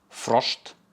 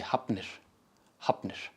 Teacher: in every case where you see an F succeeded by an N, it gives that B sound instead when pronounced